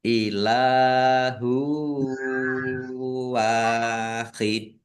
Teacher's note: Domah tanwin bertemu dengan huruf wau. Bacaan idgham bighunah. Masuk dengan mendengung yaitu mendengung wau. Ditahan biar tampak mendengungnya. · Wau fatah alif mad thobi'i panjang dua harakat. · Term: idgham bi gunnah